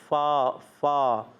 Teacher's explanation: اوپر کے دانتوں کے کنارے اور نچلے ہونٹ کے تر حصے سے ادا ہوتے ہیں۔ یہ ہے فا کا مخرج۔